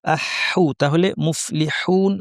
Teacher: মুফলিহুন আমাদের কণ্ঠের মাঝখান থেকে স্পষ্ট আওয়াজ করতে হবে, প্রচুর বাতাস বের হবে।